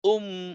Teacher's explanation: পেশটাকে ঠোঁট গোল করতে হবে আর মিমটাকে অল্প একটু ধরতে হবে